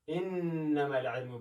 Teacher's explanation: په نون کې باید غونه وکړو، له پوزې څخه اواز راوباسو